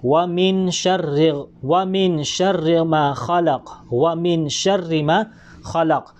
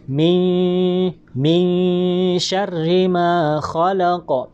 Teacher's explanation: kung itatago natin ng bahaga, yung parang hindi malinaw ang pagbasa natin ng nun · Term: ikhfa